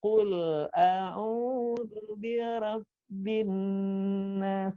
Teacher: huruf mati mengalir suaranya dengan lembut, tidak boleh mantul